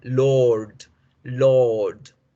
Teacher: No debemos pronunciar la R dura.